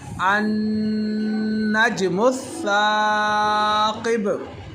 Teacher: हमज़ा और नून को मिलाकर हमने गुन्ना किया, वो इसलिए कि जब भी नून के ऊपर शद आ जाए तो नाक में आवाज़ ले जाकर गुन्ना करते हैं